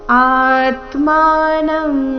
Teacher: ಆ ದೀರ್ಘ ಬಂದು ನಂತರ ಆಘಾತ